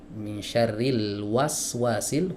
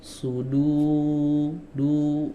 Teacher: huruf wawu di sini makhrajnya ada di dua bibir, teman-teman. Dimajukan dua bibirnya. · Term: wawu ghairu madiyah